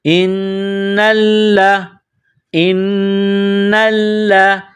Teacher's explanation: نون اور لام کو دبا کر پڑھیں گے کیونکہ تشدید ہے ان کے اوپر